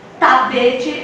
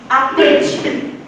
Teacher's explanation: Ela vai fazer com que o som da plosiva suma na hora de pronunciar. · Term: apagamento